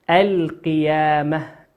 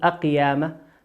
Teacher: وقول ربنا عز وجل القيامة لام ساكنة أتى بعدها حرف القاف والقاف من حروف اللام القمرية لا ندغمها لكن نظهرها ما نقول أقيامة لكن نقول القيامة.